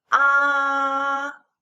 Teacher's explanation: The alphabet A pronounced as ah, and this is the first tone, high and flat.